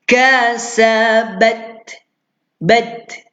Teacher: kita keluarkan percikan angin dari huruf ta